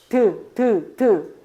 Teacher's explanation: 이 치아 뒤쪽에 있는 치조를 건드리죠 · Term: 치조음